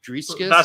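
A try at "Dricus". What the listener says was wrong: That's his name, Drickus. Driscus. You add extra letters.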